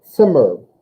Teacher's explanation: I always feel like there's like a T sound in front of the Z sound. Zimmer. And if you do that, you'll get the right kind of attack on it.